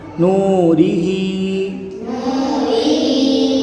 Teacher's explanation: حرف مدہ کو ایک الف یعنی دو حرکات کے برابر کھینچ کے پڑھیں گے۔ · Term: واو مدہ